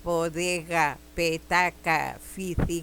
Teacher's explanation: La B es una labial sonora. La P también es una labial y la F, la fi, es también una labial. Fíjense que los pronunciamos sobre todo con los labios, ubicando los labios.